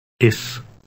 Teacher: the Dutch s has a hissing sound as in the English word Miss